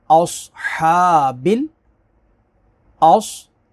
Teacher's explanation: اصحاب، اص، صاد کو پر پڑھیں گے، حروف مستعلیہ ہے، ہا کو کھینچیں گے، کھڑا زبر ہے۔